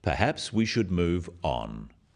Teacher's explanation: this falling intonation makes it a more definite statement rather than a suggestion · The first one, "Perhaps we should move on," is phrased as a suggestion, but it is said in a firm way with a falling intonation at the end